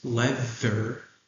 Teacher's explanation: Who knows why that th is a hard th? Yeah, it's in between two vowels.